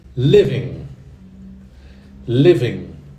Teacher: Não pronuncie o G, tá? Não fala living. Living. Como se fosse IN no final